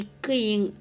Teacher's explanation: ஸோ இக்கு இங் ஆகிய இரு மெய்களும் நாவின் முற்பகுதி அன்னத்தின் அடிப்பகுதியை பொருந்துவதால் பிறக்கிறது